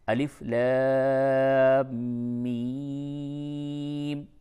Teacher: چونکہ میم مشدد ہے تو اس پہ غنہ بھی آپ کو کرنا ہے